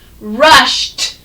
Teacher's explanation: when ed comes, it sounds like t